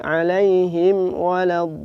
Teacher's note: Juga tidak boleh ada dengungnya 'alaihim waladdallin